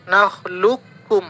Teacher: Contohnya huruf qaf bertemu dengan kaf itu dalam surah Al-Mursalat ayat 20. Maka di sini qalqalahnya tidak berlaku. Nakhluqhum langsung masuk ke kaf. Nakhluqhum, maka di sini diberikan tanda tasydidnya. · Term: idgham mutaqaribain